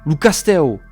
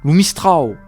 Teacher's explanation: beaucoup de masculins se terminent par un diphtongue se terminant lui-même par un U à l'écrit, prononcé we à l'oral